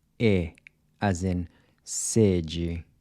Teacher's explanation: kind of like the A in say, except you cut it short. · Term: closed E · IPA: /e/